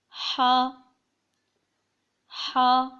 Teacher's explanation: ہا کو بہت ہی باریک اور حلق کے بیچ سے پڑھا جائے گا